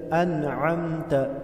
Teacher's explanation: عین کو وسط حلق گلے کے درمیان سے ادا کرے۔ انعمت علیہم علیہم میم پر اظہار ہوگا۔